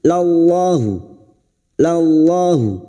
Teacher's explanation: Anzalallahu. Lam jalalah yang didahului fathah. Kita baca tafkim.